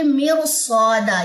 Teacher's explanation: یہ والی را پر پڑھنی ہے، چاہے اس را خالی کے بعد پیچھے زیر آ رہی ہے، لیکن چونکہ آگے حروف مستعلیہ آ رہا ہے تو یہ را پر پڑھی جائے گی